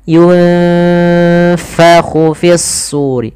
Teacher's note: Hati-hati jangan dibaca yungpahu, jangan pakai p, tapi dia f.